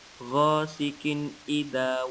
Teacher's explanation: Dan antum perhatikan lagi di kata ghasikin idza waqab, kasrah, tanwin bertemu dengan huruf alif. Hukum bacaannya yaitu izhar, dibaca jelas dan pendek tanpa mendengung.